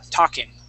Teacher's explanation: we want to make sure that we do not pronounce that L